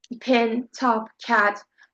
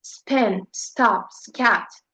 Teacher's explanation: They're not aspirated after S.